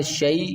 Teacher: من اخیہ شیء، شین یا زبر شیء، یا ساکن سے پہلے جب زبر آئے گی تو اس کو یا لین کہتے ہیں، یا لین کو جلدی میں پڑھنا ہوتا ہے